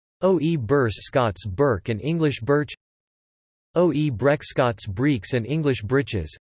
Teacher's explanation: In contexts where oe, k, and palatalized to t and d respectively in modern English, that is after a front vowel, Scots has retained the original velar pronunciation.